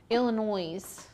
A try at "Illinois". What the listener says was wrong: Ann was saying you don't pronounce the S.